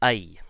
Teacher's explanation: the North American I sound that we use only sometimes is like a mix of the short U sound, ah, and the E sound